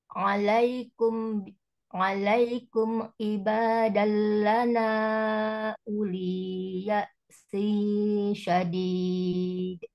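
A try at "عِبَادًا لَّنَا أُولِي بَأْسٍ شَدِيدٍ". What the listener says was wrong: Bukan ya sing tapi bak sin syadid.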